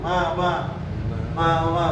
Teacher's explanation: Jadi ketika mengucapin ma pasti dia ada getaran di hidung.